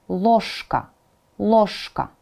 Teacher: It will affect the previous consonants. So, zh, voiced, will become sh because of k, right? So instead of saying ложка, you say it as ложка, ложка. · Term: assimilation of sounds